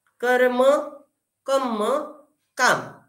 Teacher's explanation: म्हणजे म्हणजे कर्म चा कर्म असा न करता कम्म झाला मराठीमध्ये कम्म जोडाक्षर पण सिम्पलीफाय करून आणि कॉम्पेन्सेशन म्हणून क चा का करून कम्म चा काम